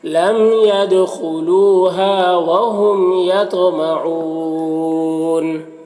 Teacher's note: وقف کی صورت میں نون کا زبر سکون سے بدل جائے گا تو مد عارض وقفی ہوگا